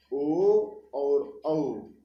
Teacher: तो कंठ और ओष्ठ इन दोनों का संयुक्त उच्चारण स्थान है कि न ये कंठ से केवल उच्चरित होते हैं न ओष्ठ से, अपितु कंठ और ओष्ठ दोनों का प्रयोग होता है इनके उच्चारण स्थान में, इसलिए ये संयुक्त रूप से कंठ ओष्ठ से उच्चरित होते हैं, इसलिए इनको क्या कहा गया है? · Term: कंठोष्ठ